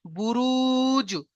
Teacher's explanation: কারণ এখানে এটা ওয়াও মাদ্দা এসছে, ওয়াও সাকিনের ডান দিকে পেশ, তাই আমরা একালিফ পরিমাণ টান দিয়ে পড়লাম